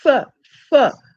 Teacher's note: the upper teeth are close to the lower lip you can say that they are almost touching f f but the air is escaping all the time there's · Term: labio dental